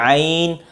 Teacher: आइन के लिए मैंने कहा था कि ये हल्क के दरमियान से अदा होगी